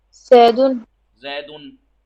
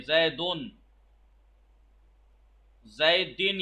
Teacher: ऐसा साकिन नून है जो कलमे के आखिर में लिखा तो नहीं जाता मगर पढ़ा जाता है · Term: तनवीन